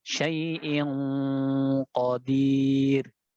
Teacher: Coba antum tebalkan lagi untuk ikhfa yang qaf.